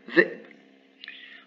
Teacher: il faut juste faire une pause, zeb, et fermer la glotte et rouvrir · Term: sukun